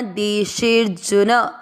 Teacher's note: ह्री के साथ आधा द हृद, देशे, शे के बाद में अवग्रह। आपको मात्रा को लंबा खींचते हुए आधा र पढ़ना